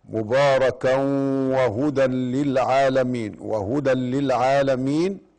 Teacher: وهدى للعالمين إدغام بغير غنة لأنه تنوين وأتى بعد اللام